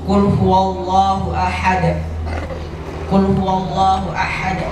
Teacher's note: Kalau qul Allahu itu ha tebal, tapi kalau ahad itu termasuk ha tipis.